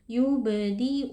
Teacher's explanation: bunyi huruf ba sukunnya Kita pantulkan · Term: Qalqalah Sura